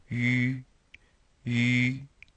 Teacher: We have this, I guess these are called ellipses, again, which means that we're trying to say E with our lips rounded, and we come up with the French sounding U.